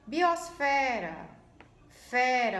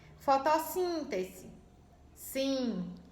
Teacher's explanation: tônica de forma rápida fala a palavra como se fosse vender a vogal da sílaba tônica se prolonga